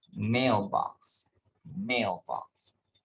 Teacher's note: primary stress falls on the first component the first word even if the two words are written separately